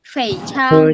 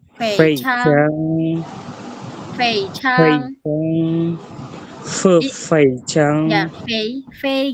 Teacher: gigi kamu yang atas itu nyatuh ke bibir, bibir bawah. Jadi kayak ada udara F gitu. Pe jadi enggak f misalnya yang yang ini ya tadi kurang kurang ada desisan aja Fe Chang gitu. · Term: Huruf F